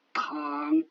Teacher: Le T, c'est comme un T français expiré.